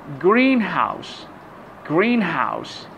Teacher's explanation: the stress on the first part of the compound word